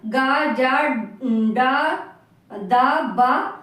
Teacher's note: जिनके उच्चारण में स्वर तंत्रियों में कंपन होता है वो घोष या सघोष के अंतर्गत आते हैं